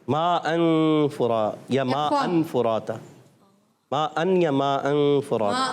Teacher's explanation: नून को छुपा के अदा करते हैं और फिर नाक में आवाज़ ले जाकर पढ़ते हैं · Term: इख्फा